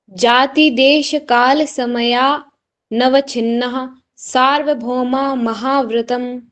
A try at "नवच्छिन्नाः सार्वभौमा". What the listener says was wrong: हाँ, छिन्नाह, आ की मात्रा का उच्चारण करना, और भौ, भौ के साथ में क्या है, डबल औ की मात्रा है, भौ माह महाव्रतम। जाति देश काल समया नवछिन्नाः सार्वभौमा महाव्रतम।